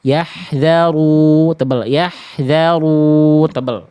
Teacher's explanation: huruf-huruf tebal Bunda masih kurang tebal Ya, karena pangkal lidahnya belum aktif. Contohnya di sini ro dhammah.